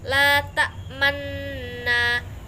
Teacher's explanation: La ta'manna, bacaan ismam. Bacaan ismam yaitu mencucu di tengah disertai dengan dengung sebagai isyarat bunyi dzumah.